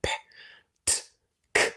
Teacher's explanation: you can hear those voiceless sounds are just little sounds, a bit like percussion